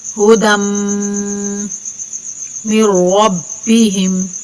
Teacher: اولئک علی ہدی، یا بھی ادھر خالی ہے، یہ یا بھی نہیں پڑھی جائے گی۔ دال کو میم سے ملا کر میم کے اوپر غنہ کر کے پڑھیں گے